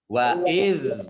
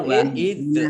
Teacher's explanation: lagi-lagi ya saya ingatkan wa iz. Jangan wa id. Ya, jangan qalqalah